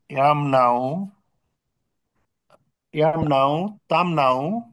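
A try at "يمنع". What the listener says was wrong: Good.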